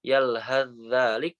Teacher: Yalhadzalik itu juga sama langsung melebur, sa-nya melebur ke zal.